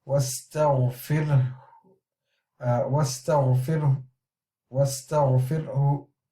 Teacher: we are weakening the dhamma to do a Rawm